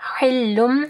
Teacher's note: ہا کو واضح پڑھنا ہے گلے کے درمیانی حصے سے